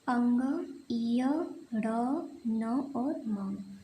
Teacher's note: तो इन्हें बोलने के लिए हमें मुंह के साथ साथ हम अपने नाकों का भी प्रयोग करते हैं। इनकी जो ध्वनि है वो हमारे मुंह और नाक दोनों से निकलती है। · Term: नासिक व्यंजन